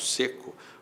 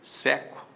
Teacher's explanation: Seco tem timbre fechado, seco tem timbre aberto.